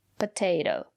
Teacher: the second letter T is pronounced as a fast D. Potato. Because the syllable after the second letter T is not stressed.